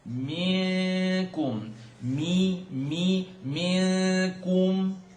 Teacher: noon sukoon followed by kaf, tongue not touch, ikhfa, and it's light.